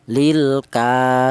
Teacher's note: Kemudian di sini ada lilka, yaitu ada huruf kaf di mana huruf kaf ini berharakat berdiri ini dibaca panjang yaitu satu alif atau dua harakat atau dua ketukan